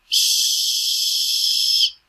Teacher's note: voiceless no vibration of the vocal cords